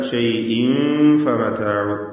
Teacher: വീണ്ടും ഇഖ്ഫാ ഹഖീഖി വരികയാണ്. തൻവീൻ ശേഷം ഫ. ഇവിടെ തൻവീനിനെ അവ്യക്തമാക്കി മണിക്കുകയാണ് വേണ്ടത്, മറച്ചു മണിക്കുക